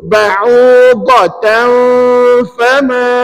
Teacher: Sebenarnya kalau ditanya tanwin tu nak bunyi tak? Bunyi, tapi tak jelas. Samar-samar. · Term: ikhfa' hakiki